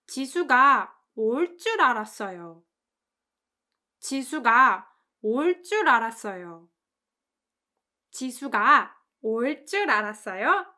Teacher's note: The stress is on 올 줄, so it means I thought 지수 would come, and it implies that she did not come.